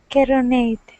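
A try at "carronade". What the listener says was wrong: Give me a good English R's instead of carro.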